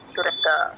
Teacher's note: దా వత్తు వినపడాలి కానీ మహాప్రాణం రాకూడదు